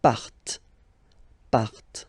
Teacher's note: Remember, classic ending, ent, but then you don't pronounce them